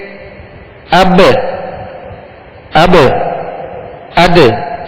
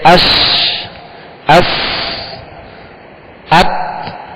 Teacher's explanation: حروف قلقلہ کو ادا کرتے ہوئے مخرج میں آواز لوٹتی ہے، لگ کر لوٹتی ہے، جیسے اب، اب، اد، یہ آواز لوٹ رہی ہے.